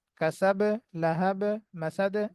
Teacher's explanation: সবগুলো বা একটু বাউন্সি সাউন্ড হবে